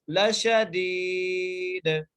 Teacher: خیری لشدید, لام کے اوپر زبر ہے, دال کے اوپر شین کے اوپر بھی زبر ہے. دال کو ہم ایک الف کی مقدار کھینچ کے پڑھیں گے کیونکہ یہاں پہ یہ مدہ آ گئی ہے, اور لاسٹ میں جو دال ہے یہاں پر ہم قلقلہ کریں گے کیونکہ ہم نے وقف کی صورت میں اس دال کو ساکن کر دیا, یعنی اس کے اوپر جزم لگا دی.